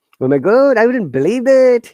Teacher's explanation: you see that intonation is always high